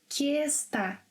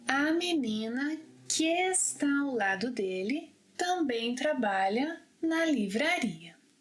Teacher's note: So here somehow I linked 'queestá'.